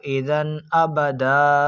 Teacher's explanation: تنوین کے بعد حرف حمزہ جو کہ حروف حلقی میں سے موجود ہونے کی وجہ سے ہم اس تنوین میں گننا نہیں کریں گے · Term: اظہار